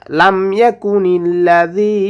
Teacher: জালটা জিহ্বার আগা থেকে নরম করে উচ্চারণ করব। জাল ইয়াদের জেরের বাম পাশে জজমেলা ইয়া আসার কারণে এক আলিফ টেনে পড়ব।